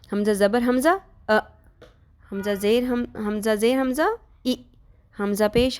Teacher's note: حمزہ حلق کے اس حصے سے ادا ہوتا ہے جو سینے کی جانب واقع ہے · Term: حمزہ کا مخرج